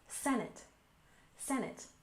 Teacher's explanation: next we have Senate we stress the first syllable